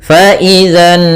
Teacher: Kemudian pada lafal nun sendiri ada bacaan gunah yaitu kita tahan suara nunnya sepanjang dua harakat. Faizanu baru dilepas.